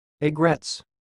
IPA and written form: ˈaɪ.ɡrɛts (aigrettes)